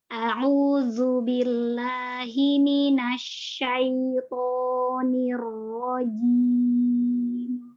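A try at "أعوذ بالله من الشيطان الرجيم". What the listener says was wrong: Hanya saja huruf zalnya lagi nih kayaknya. Zalnya ini dijaga makhrajnya, Mbak. Jadi sifat rohnya zu, jangan zu. Menyerupai huruf zai. A'udzu terlalu berlebihan. Karena sifatnya jahar ya. Jadi dan juga dia rohwa. Jadi zu. Lembut saja. A'udzu. Zu. Jadi tidak zu.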